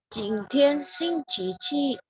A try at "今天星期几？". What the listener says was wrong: Oke ya, cuma nada ya. 今天星期几? Ji nada 3 ya. Ji-nya nada 3. Ibu mungkin boleh ikutin nada saya, di mana 今天 juga nada 1-1 ya. 今天星期几? Ya, 几 ya.